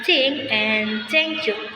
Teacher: diucapkan di ujung lidah di antara gigi atas dan bawah